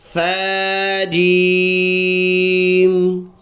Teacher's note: تھوڑا سا زبان نکال کے اس کو نرم پڑھیں گے